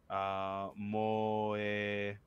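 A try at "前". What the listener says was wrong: Moe? That's ma.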